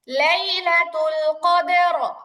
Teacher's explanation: এখানে আপু দালের মধ্যে কলকলা হবে